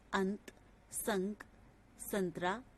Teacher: अनुस्वार का उच्चारण नाक से किया जाता है